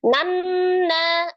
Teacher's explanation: dibacanya ditekan ditahan dua sampai tiga harakat dan suaranya dimasukkan ke dalam rongga hidung atau alkhaisum nanya hati-hati Eh tidak dibaca panjang ya Bukan Mad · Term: dengung, ghunnah